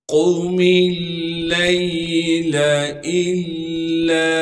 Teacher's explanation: میم لام زیر مل، پھر لام پر زبر ہونے کی وجہ سے لام کو آگے ہم یا ساکن سے ملا دیں گے، اس لام کو ہم بغیر کھینچے پڑھیں گے۔ قم اللیل الا، حمزہ کو لام سے ملائیں گے، اس لیے کہ لام پر تشدید ہے، تشدید ہونے کی وجہ سے تھوڑا سا ٹھہراؤ رکھیں گے۔